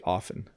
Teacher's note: I often don't say the T when I'm speaking quickly. But you can say it.